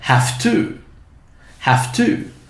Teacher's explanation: the v sound can be f sound. So you say have to.